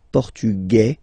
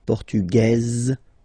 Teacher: Masculine, portugais. You don't pronounce the S, feminine form, portugaise, you pronounce this Z sound